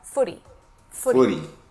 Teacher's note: pay attention to that flap T sound. It sounds more like a D